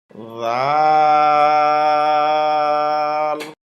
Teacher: নরম হবে, জিহ্বার আগা উপরের দাঁতের আগায় লাগবে। রাল র হরফটি জিহ্বার আগার পিঠ উপরের তালুতে লাগবে, মোটা হবে, বাংলা আকার প্রকাশ পাবে না।